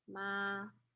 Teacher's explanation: you can hear that it stays at the same level